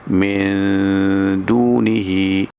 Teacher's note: Nun mati kita nak sambut huruf dal. Itu kita dengung di situ.